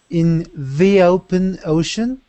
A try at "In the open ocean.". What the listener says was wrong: Perfect, perfect.